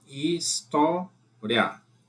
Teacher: O I é semivogal, o A é vogal, de tom crescente. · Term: ditongo crescente